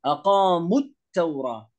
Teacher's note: فهنا اللام، هنا اللام شمسية، حكمها إدغام